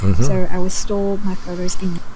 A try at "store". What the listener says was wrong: The word is store, not stole.